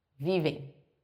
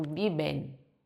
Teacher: No espanhol, não, eu tenho que pronunciar esse N final. Eu digo viven.